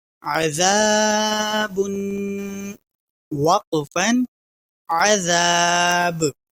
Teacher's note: تو یہاں حروف قلقلہ میں سے با آ رہا ہے، اس لیے ہم با پر قلقلہ کریں گے